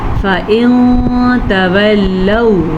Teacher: نون کو چھپا کے پڑھا ہے کیونکہ نون ساکن کے بعد تا حروف اخفا میں سے ہے